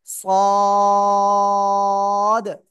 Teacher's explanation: এই অক্ষরটা মোটা আওয়াজে পড়তে হয়, জিহ্বার আগার নিচের দুই দাঁতের পেট ও আগার সাথে লাগাবেন, লাগিয়ে মোটা আওয়াজে সদ, চার আলিফ টান, জোরে বলেন সদ।